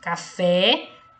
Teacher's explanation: o fé é pronunciado com mais intensidade então fé é a última sílaba Então se trata de uma oxítona a palavra café é oxítona